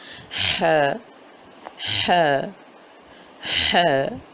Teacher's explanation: ح ہے حلق کے درمیانی حصے سے حلق نمبر 2 سے اوپر اور نیچے والے حلق کے حصے کے درمیان والے حصے سے وسط حلق سے ح کی ادائیگی ہوتی ہے ح ح ح، اور یہی اس کی ساؤنڈ ہے ح ح ح ح۔